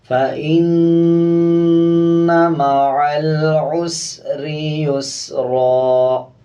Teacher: نون کے اوپر شد ہے، غنہ کریں گے اور غنے کی آواز کو ناک سے نکالیں گے۔